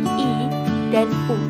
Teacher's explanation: vokal yang dibentuk dengan lidah diangkat setinggi mungkin mendekati langit-langit dalam batas vokal. Vokal tertutup ini dapat digambarkan terletak pada garis yang menghubungkan antara I dan U.